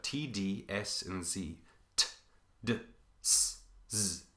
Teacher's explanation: All of these are tongue against alveolar ridge